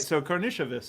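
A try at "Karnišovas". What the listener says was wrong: Like an SH. Like an SH.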